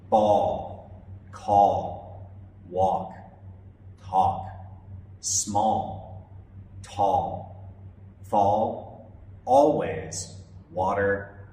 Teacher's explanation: notice how the a sound is soft and rounded · it's lower in the mouth and sounds like all · a like in ball or walk it's lower in the mouth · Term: aw sound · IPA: /ɔː/